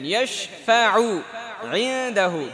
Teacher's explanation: দেখেন ইশফাউ ইনদাহু দুইটা আইন একসাথে চলে আসছে